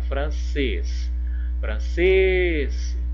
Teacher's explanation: aqui a sílaba tônica é a última então é uma oxítona